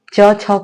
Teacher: ठीक है, य और बड़ा स, तो इन सारे वर्णों को हम तालव्य वर्ण कहते हैं, अर्थात इनका उच्चारण तालु से होता है। · च छ को बोलेंगे तो आपकी जिह्वा आपके तालु ऊपर के भाग को टच करेगी